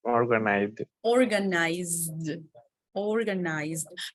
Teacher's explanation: because remember letter Z you have vibration it's not like s